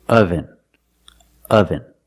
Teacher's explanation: The first syllable makes a sound like cup and up. This is a relaxed sound. Your mouth is almost closed.